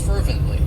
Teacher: it has three syllables and the stress is on that first syllable fervently and what it means is that you are just showing